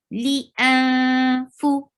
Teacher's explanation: Light ikhfa. Li, you are hiding the sound of noon. Going towards fa with gunna in your nose. Li, fu. For circle your lips.